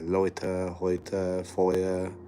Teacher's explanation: EU is pronounced as oi. They have what they call diphthongs.